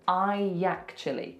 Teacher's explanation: what we're going to put in the middle is we're going to put a Y sound. So it becomes I actually.